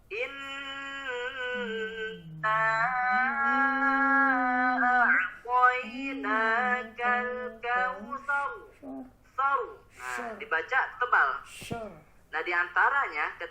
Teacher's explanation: itu terlalu berlebihan kemudian bibirnya sambil monyong yaitu kesalahan ketiganya balik tidak boleh tipis tidak boleh terlalu berlebihan dalam menggetarkan huruf roh dan juga tidak boleh memonyongkan bibir cukup tebal saja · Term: huruf ro tafkhim